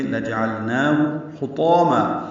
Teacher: حطاما ہا وسط حلق سے ادا کریں گے، تو پر الف مدہ ہے، 2 حرکات لمبا ہے۔